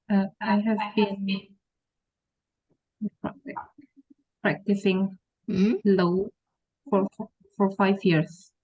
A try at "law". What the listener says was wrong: Ya, tapi cara membaca law-nya ya ada sedikit kesalahan. Cara membacanya tuh kayak gini ya. Law, bukan law. W-nya nggak usah dibaca.